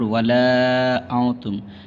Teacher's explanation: یہاں پہ مد منفصل اس کو کھینچنا ہے 2.5 الف کے برابر